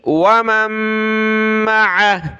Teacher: میم کو اگلی میم کے ساتھ ملایا، ناک میں آواز پیدا کی